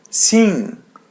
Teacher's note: The N is pronounced as light N and the letter I is pronounced as E.